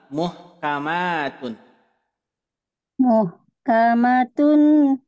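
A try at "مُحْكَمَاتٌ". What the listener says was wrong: Oh iya tadi enggak dengung ya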